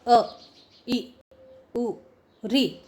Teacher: ह्रस्व स्वर जो होते हैं उनके उच्चारण में बहुत कम समय लगता है